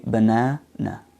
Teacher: the word banana has a main stress on the second syllable and the other two syllables are schwa sounds